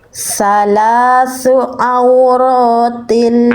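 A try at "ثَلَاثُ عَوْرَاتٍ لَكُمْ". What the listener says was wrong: Ainnya kurang neken Bunda. Itu masih agak bunyinya masih nanggung ainnya. Belum duduk di makhrajnya. Salasu auro.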